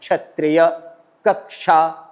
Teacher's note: वो क और मूर्धन्य सकार जो होता है जिसको हम षटकोण वाला श बोलते हैं उन दोनों के मेल से क्ष बनता है